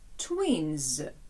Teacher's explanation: А тут ми згадаємо, що слово twin, близнюк закінчується на н. Н - це неглухий звук, а отже, закінчення після цього звуку має звучати дзвінко, і тому воно читатиметься z.